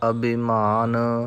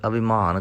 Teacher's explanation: ਅਭਿਮਾਨ ਭੱਬੇ ਨੂੰ ਭਾਰਾ ਕਰਨਾ ਹੈ, ਮੰਮੇ ਨੂੰ ਨਹੀਂ। ਕਈ ਗੁਰਮੁਖ ਜਨ ਅਭਿਮਾਨ ਕਰ ਜਾਂਦੇ ਨੇ, ਮੰਮੇ ਨੂੰ ਭਾਰਾ ਕਰ ਜਾਂਦੇ ਹਨ।